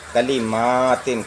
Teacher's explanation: ہیں، کلیماتن، میم کو کھینچنا ہے، میم میں الف ہے، کلیماتن، کاف کو لام کو جلد پڑھنا ہے، میم کو کھینچنا ہے، پھر تا کو جلد پڑھنا ہے